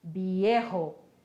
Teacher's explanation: Lembrem-se de novo, o V tem som de B e o J tem o som do R lá no fundinho da garganta